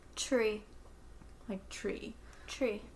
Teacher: It turns out that the sound that we pronounce in tree is not a T sound. It's really more of a CH sound.